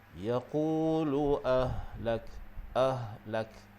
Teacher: ha di situ adalah ha simpul ataupun ha bulat, yang makhrajnya adalah di bahagian pangkal kerongkong, yang berdekatan dengan bahagian dada. Jadi sebutan huruf ha pastikan keluarnya di situ.